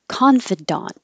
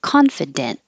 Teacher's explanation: we do say the ah in daunt and we don't reduce it to an it or an uh it does stay the same ah sound as the first one